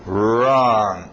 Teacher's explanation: Escrito W, mas som só do R. Wrong. A entonação geralmente vem com isso.